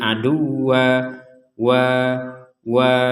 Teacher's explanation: fathatain ini akan kita baca panjangnya dua harakat menjadi aduwa wa wa Jadi dua Har dua harakat jadi kita